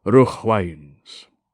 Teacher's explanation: A phrase like rough winds, for example, is more pleasing when the GH digraph is sounded, since it is a sort of onomatopoeia. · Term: H sound